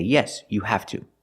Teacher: These short sentences end with to, so the to is stressed and we pronounce it to.